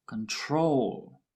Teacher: With control, the stress is on the last syllable